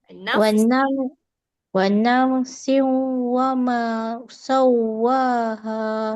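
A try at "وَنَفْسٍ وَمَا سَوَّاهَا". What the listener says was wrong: Okay, cantik dah bunyi siung tu, tapi wanaf tu kemaskan huruf fa bunyi huruf F Wanaf. Wanaf siung wa ma.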